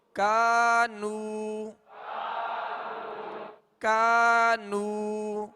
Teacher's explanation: یہ ڈنڈی والا کاف ہے، اس کو باریک پڑھنا ہے اور الف مدہ ہے، ایک الف کی مقدار میں کھینچیں گے.